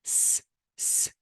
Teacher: say s s and put your finger on your th throat there will be no vibration and because there is no vibration it is voiceless